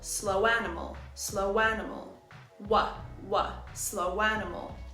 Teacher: are round we insert a w sound to link The Sounds let's look at the phrase slow animal we add a w sound in the middle